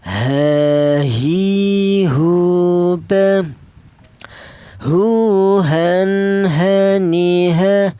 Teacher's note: Untuk huruf ha keluarnya huruf berasal dari pangkal tenggorokan